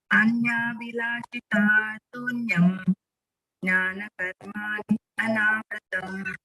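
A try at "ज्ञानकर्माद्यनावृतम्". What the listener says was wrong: There is no jnana karmadi. Please remember jnana karma. Jnana karmad anavritam. Not jnana karmad. Jnana karmad.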